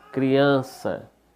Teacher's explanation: Criança, né? A sílaba forte, an, é a penúltima, então paroxítona.